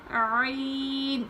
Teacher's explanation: عین کو حلق سے نکالتے ہیں، حلق کے نچلے حصے سے پڑھا جاتا ہے